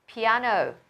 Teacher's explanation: trọng âm của từ piano vào trọng âm thứ hai này, âm tiết thứ hai được nhấn nhé. Piano, Vietnamese thì âm tiết thứ 3 được nhấn này.